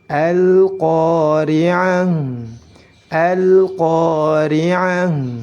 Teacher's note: Kemudian setelah itu ada lam sukun yang terdapat pada kosakata lamut ta'rif, pada huruf lamut ta'rif. Maka lamut ta'rif jika bertemu dengan huruf qaf harus dibaca jelas.